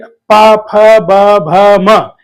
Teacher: एक के ऊपर दूसरा ओष जरूर स्पर्श करेगा · इनको जब हम बोलते हैं उ और देखिएगा कि प फ ब भ म, इनमें ओष्ठ जो है एक के ऊपर दूसरा ओष्ठ जरूर स्पर्श करेगा